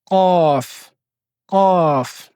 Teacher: c'est l'arrière de la langue qui va taper l'arrière du palais. On appelle ça le palais mou. Donc tout dans le fond.